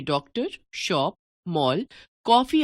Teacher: इनमें लगने वाला स्वर ना तो हिंदी का ओ स्वर है और ना औ। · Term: आगत ध्वनियां